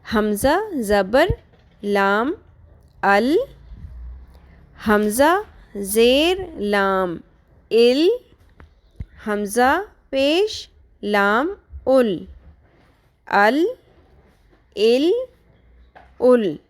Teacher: اوپری کروٹ سامنے کے اوپر والے 6 دانتوں اور 2 داڑوں ٹوٹل 8 دانتوں کے ساتھ مسوڑوں سے اچھی طرح لگے تو لام ادا ہوتا ہے۔ لام کی آواز باریک ہوتی ہے۔